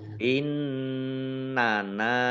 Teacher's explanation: Nun tasdid dibaca ghunah atau mendengung ditahan dua harakat